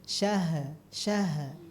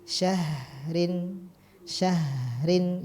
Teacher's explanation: izhar izhar halq nun sukun ketemu Hamzah ya Alfi Syahrin nah ketika membaca Syah h-nya dia disukunkan maka dialirkanlah di sana suara dan juga udaranya ya jangan mantul jangan Syah Syah nah tapi Syahrin Syahrin gitu ya jadi syahr